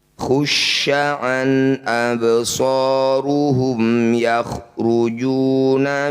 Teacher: ulang sambil bahas tajwidnya Fa tanwin bertemu Hamzah disebut bacaanhar halq bunyi Fath tanwinnya baca jelas tidak usah dengung · bak sukun di tengah bacaan disebut bacaan qalqalah sugro. Bunyi bak dipantulkan, pantulannya mengalir saja.